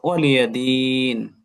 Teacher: এরপর ওয়ালিয়া দিন, জেরে বামে জজমালা ইয়া, তার ঠিক পরে হরফে অক্ফ হওয়ার কারণে এটা মাদ্দে আরজি হয়ে গেল, অর্থাৎ তিন আলিফ টান